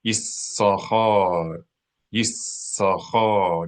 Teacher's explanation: I'm holding down the S sound, extending the sound of the S because there's a dagesh in it. That is called gemination.